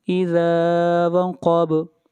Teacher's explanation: با کے اوپر قلقلہ ہوگا، اِذَا وَقَبَ، اور قلقلہ کہتے ہیں آواز کو ہلانے کو، آواز کے ہلانے کو۔